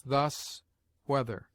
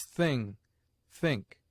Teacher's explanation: Th has two sounds, the one soft, as thus, whether, the other hard, as thing, think.